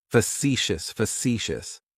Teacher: That first syllable has that schwa, that sound.